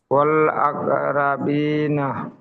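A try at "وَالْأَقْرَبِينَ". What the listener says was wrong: আকরা বলা যাবে না, ওয়াল আকর। জি, আর এখানে ইজরাটি হবে, কফের উপর সাকিন এসেছে, কফ হুরুফে কলকলা, তাই কফকে কলকলা করে ডান দিকের অক্ষরের সাথে মিলিয়ে পড়তে হবে। আর এখানে ইয়া সাকিনের ডান দিকে জের এসেছে, ইয়া মাদ্দা হবে।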